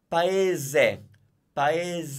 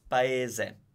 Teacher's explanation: That s sounds z because it's between two vowels.